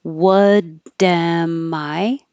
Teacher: The am reduces to what'm, what'm.